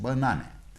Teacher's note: in this word banana we have second syllable na stress and the first and third syllables are unstressed